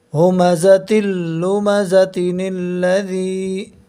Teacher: ہم یا ساکن سے پہلے زیر ہے، زیر اس کو حرف مدہ کہتے ہیں۔ یا مدہ کو ایک الف کے برابر کھینچ کر پڑھیں گے